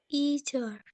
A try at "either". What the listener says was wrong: Either. No T, okay? Maybe like let's say either. Oh, with the D. Okay, dalam bahasa Indonesia kita mungkin menggunakan bukan T tapi D, okay? Either.